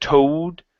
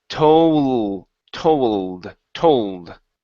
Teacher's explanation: Before you said toad, okay? Use your tongue to pronounce the L, okay? Not your lips. It's told, told, told. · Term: L sound